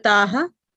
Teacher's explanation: Like, Prabhuji, Prahladananda Prabhuji was saying, if we can give the stress on the visarga in the end syllable, it will be really nice